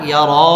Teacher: পুর হবে এবং ল এক আলিফ টেনে পড়তে হবে বিআন্নাল্লাহা ইয়ারা রর উপর খারা জবর আসছে এক আলিফ টেনে পড়তে হবে এবং এই রটা পুর হবে